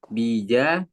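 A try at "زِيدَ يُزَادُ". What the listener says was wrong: zai ganti baknya, zida Ya, zida yuzadu.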